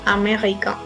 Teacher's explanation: si nos vamos de acuerdo a la fonética a va a ser nasal